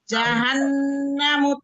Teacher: ditahan dengungnya tiga harakat di rongga hidung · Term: guna akmal